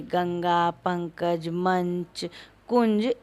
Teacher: अनुस्वार जिस स्पर्श व्यंजन से पहले आता है उसी व्यंजन के वर्ग के अंतिम नासिक के वर्ण के रूप में उच्चरित होता है